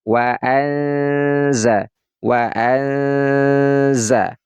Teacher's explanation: Nun matinya ini kita baca samar-samar wa Waza nah ini termasuk Ikfa yang ausat Yang pertengahan bunyi suaranya adalah suara n